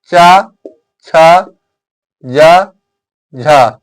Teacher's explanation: स्पर्श संघर्षी व्यंजन की संख्या चार, कौन कौन, चा, छा, जा, झा